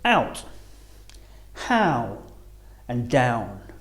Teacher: This is a combination of a and uh or u. Now our mouth is closing and the shape of the lips is changing at the same time rounding a little as we say the sound ow. Starting on the ah and finishing on the uh or oo as in the words out, how and down.